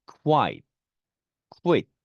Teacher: QU는 발음은 K와 W 음가가 납니다. Q, Q 이런 느낌이죠.